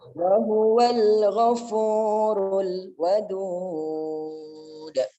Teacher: itu ada dal di akhir kalimat kalau kita matikan menjadi qalqalah kubro